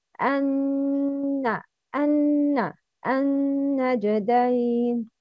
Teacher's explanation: نون مشدد. ميم مشدد. غنى with two beats.